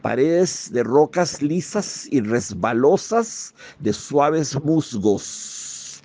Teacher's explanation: Para crear la sensación de lo resbaloso, su infalible instinto musical satura la frase de las S sibilantes, las S abiertas, fricativas, alveolares